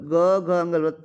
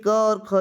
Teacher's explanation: ग घ अंग तीसरा तीसरा चौथा पांचवा अक्षर घोष पहला और दूसरा अक्षर अघोष